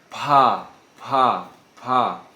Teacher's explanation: Se eu estiver soprando bastante na minha mão, estou sentindo o vento bater forte, eu estou pronunciando corretamente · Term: som mais explosivo